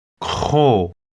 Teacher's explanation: it's a guttural k sound